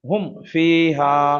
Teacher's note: এই মিম সাকিনটা গুণনা হবে না শুধুমাত্র পড়ে চলে যাব হুমফা এখানে কিন্তু আমরা বলিনি যে হুম বলে গণনা করিনি কারণ